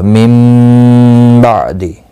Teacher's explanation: नून साकिन के बाद मुतहरिक बा आया है, यहाँ पर क़लब होगा · आइन साकिन को हिलाना नहीं, दी को खींचना नहीं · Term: इक़लाब